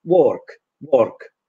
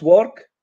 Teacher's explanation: in this non-regional RP, we don't pronounce the R's in pre-consonantal position. So work becomes work, and then it's difficult to know whether you want to say walk or walk.